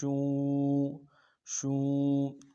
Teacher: شین حروف تفشی میں سے ہے، شین کو واضح کریں گے · واو مدہ کو ایک الف دار میں کھینچیں گے